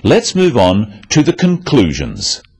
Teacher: stressing conclusions because it's the key word in the sentence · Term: sentence stress